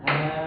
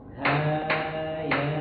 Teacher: Kalau untuk hayanya enggak boleh terlalu panjang, Pak. Dua harakat aja. Jadi ketukan dua harakat itu seperti kita ee begini aja gitu.